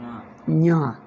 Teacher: ಞ Jackie ಜಾನನ್ನು nasal ಮಾಡಿಬಿಡು, ಞ ಆಗುತ್ತದೆ. ಞ ಹಾಗೆ ಹಾಗೆ ಮಾಡಬೇಕು.